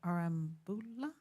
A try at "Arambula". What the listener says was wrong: Need to roll your R's. It's kind